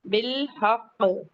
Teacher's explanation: قاف پہ قلقلہ اکبر ہوگا اور لام ساکن کو ہلانا نہیں ہے، اپنے مخرج سے پڑھنا ہے